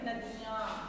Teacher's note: चंद्र बिंदु लगा हुआ अक्षरों का हम नासिक और मुंह दोनों द्वारा हम उच्चारण करते हैं